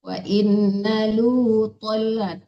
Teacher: Innalunya itu ditipiskan ya Bu, jangan wa innalu, jangan tebal, lu tipis biasa. Wa innalu tolat, tonya baru tebal.